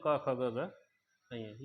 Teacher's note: कंठे व्यंजन अर्थात कंठ का इस्तेमाल जिनसे बोल रहे हैं